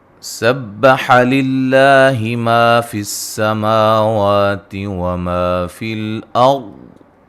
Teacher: را کو موٹا، را ساکن سے پہلے زبر ہے، اور ضاد کو بھی موٹا ادا کریں گے۔ وما فی الارض، جب وقف کرنا ہے ضاد کو بھی ساکن کرنا ہے اور موٹا ادا کرنا ہے۔